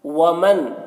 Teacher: ومن نون میں اخفا ہوگا، نون کی آواز کو ناک میں چھپا کر پڑھیں گے